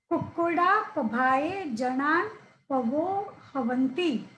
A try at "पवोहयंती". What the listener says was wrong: नहीं, पवोह यंती। पवोह यंती। नहीं, हाँ ठीक है, पवोह, स्पष्ट बोलिए ना, पवोह यंती। नहीं, हवंती नहीं बोलना है, पवोह यंती। नहीं, पवोह बोल दीजिए, पवोह यंती ऐसे बोलिए।